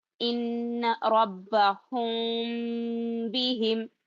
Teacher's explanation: آواز جو ہے ہا کے بعد ناک میں لے جانا پہلے آواز، پھر میم کی آواز ہونٹ ملا لینا